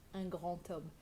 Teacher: It sounds like you're saying the word Thomas, un grand homme, because the liaison between the D and the next vowel is a T sound